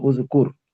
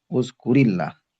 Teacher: উজকুর, এটাই মূলত উচ্চারণ, উজকুর সাকিন দিয়ে, রতে সাকিন দিয়ে, মানে তুমি স্মরণ করো, কিন্তু এই সাকিনটা পরের আল্লাহ শব্দের সাথে মিলাই পড়ার কারণে শুধুমাত্র জের দেওয়া হবে